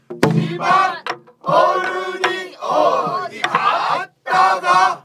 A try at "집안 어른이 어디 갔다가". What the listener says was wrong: 어디 어디. 그것도 한 옥타브 차이.